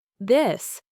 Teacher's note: you make a sound with your vocal cords, creating a vibration. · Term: th sound